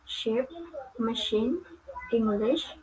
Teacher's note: Next is English consonant sh, or sh. It belongs to palatal and fricative.